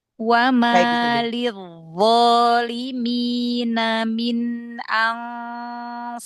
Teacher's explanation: minnya jangan ngerem juga walaupun dia sukun idhar ya.